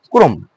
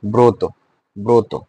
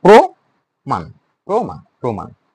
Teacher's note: শব্দের প্রথমে যদি র ফলা যুক্ত ব্যঞ্জনের অ উচ্চারণ কি হয়? ও হয়।